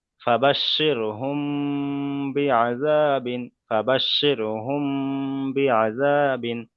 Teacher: একালিপ পরিমাণ গুণনা, তার কারণ হলো মিম সাকিনের পরে বা এসছে, তাই মিম সাকিনকে ও একালিপ পরিমাণ গুণনা। · এক ফায়ারে ইখফায়ে বা শাফাবি, হ্যাঁ, সাকিনের, ইখফায়ে শাফাবি, মিম সাকিনের পরে যদি মিম সাকিনের পরে বা এসছে, তাই মিম সাকিনকে এক, একালিপ পরিমাণ গুণনা করে পড়তে হবে, একে ইখফায়ে শাফাবি বলা হয়